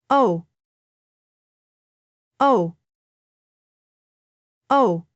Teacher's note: two vowel sounds glide together into one smooth syllable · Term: diphthong